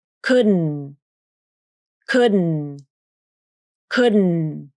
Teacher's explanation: You use nasal plosion on the D consonant. That means the tongue tip comes up to the alveolar ridge for the D consonant. Then it stays there as you lower the soft palate to pronounce the N consonant. And once the soft palate is lowered, a burst of air comes out of the nose, hence the term nasal plosion.